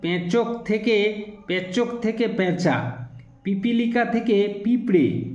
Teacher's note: মূল শব্দের মধ্যে নাসিক্য ব্যঞ্জন না থাকা সত্ত্বেও শব্দ রূপান্তরের প্রক্রিয়া আপনা থেকেই অনুনাসিক হয়ে গেলে তাকে বলে শতনাসিকী ভবন